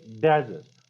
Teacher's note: I'm stressing the first syllable of a word.